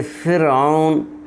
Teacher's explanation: را ساکن سے پہلے فا کے نیچے زیر ہے اور یہ فرعون ایک کلمہ ہے تو یہ را باریک پڑھی جائے گی